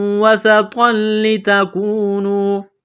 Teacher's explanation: سین میں سیٹی کی آواز پیدا کریں گے